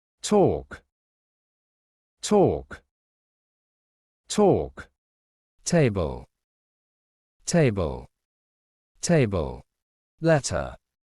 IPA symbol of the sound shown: t